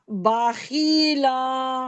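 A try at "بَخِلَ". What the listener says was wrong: खींचे मत, खीला नहीं, बाखीला। खील नहीं, खिल। खिल।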